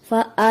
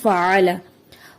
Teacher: عین کو حمزہ بنا دیا جاتا ہے، ادائیگی میں فعل ہو جاتا ہے جبکہ درست ادائیگی فعل۔